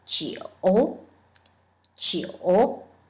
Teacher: First, think of the J sound, which is G, like a Jeep, and then add U sound after that, plus third tone.